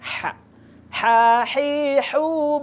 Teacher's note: keluarnya itu di tengah-tengah tenggorokan